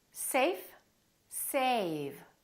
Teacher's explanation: Notice how A was longer with the V than with the F.